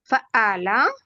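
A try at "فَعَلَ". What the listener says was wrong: ఇక్కడ చిన్న కరెక్షన్ ఉంది. ఇక్కడ ఫ్లో కట్ కాకుండా చదవాలి. ఫాలా ఫాలా ఇలా ఆగకూడదు. ఫాలా ఫాలా చదవండి. ఇలా కంటిన్యూస్ గా ఉండాలి. మధ్యలో ఫాలా ఫా ఇలా ఆగకూడదు. ఫాలా.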